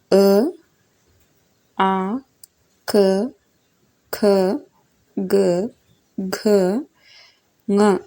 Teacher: ಕಂಠ್ಯ ಅಂದರೆ ಗಂಟಲಿನಿಂದ ಅಥವಾ ಕಂಠದಿಂದ ಬರುವ ಧ್ವನಿಗಳು ಇವು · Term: ಕಂಠ್ಯ ಅಕ್ಷರಗಳು